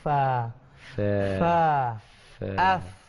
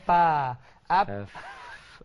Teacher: Jadi fa tu biar betul-betul ada angin dia.